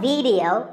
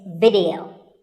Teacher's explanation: both the I and the E are pronounced as short I sounds. It's not video, it's video.